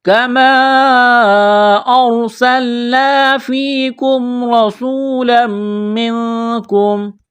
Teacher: نون ساکن کے بعد کاف ہے، حروف اخفا ہے، غنہ کریں گے، آواز ناک میں چھپائیں گے